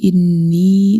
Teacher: انی نون مشدد ہے، اس پہ غنہ کریں گے، اس کے اوپر چھوٹی مد ہے، اس کو ہم 2 سیکنڈ تک لمبا کریں گے.